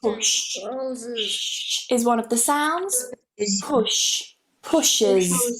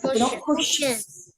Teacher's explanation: You need to add an extra syllable. You need to add that schwa.